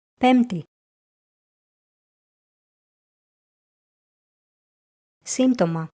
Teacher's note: in the combination μπτ the letter π is often silent.